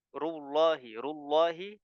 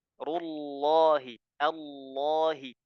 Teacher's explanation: lam pada lafzul jalalah dalam bertasdid itu dia tebal